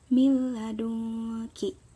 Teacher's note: Dibacanya memasukkan dengan tidak dengung. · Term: idgham bila gunah